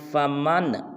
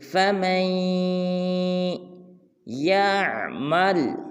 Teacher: نون کو نہیں پڑھیں گے بلکہ میم کو یا مشدد کے ساتھ ملائیں گے اور اخفا کریں گے